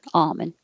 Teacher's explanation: americans usually don't pronounce the l in almond